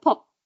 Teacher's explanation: Or the t at the end, instead of having pot with the release, you might have pot with no release. That's unreleased.